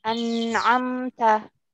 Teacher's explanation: Jadi izhar yang ditenggorokan dengan bacaan izhar halqi yang ditenggorokan. An'amta, pada saat kita membacaan memang tidak ditahan, tapi sebenarnya ada gunah yang agak kurang masuk ke hidung pada saat pembacaan huruf nun. An'amta, tanpa kita sadari sebenarnya dia nunnya itu masuk ke hidung. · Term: guna kurang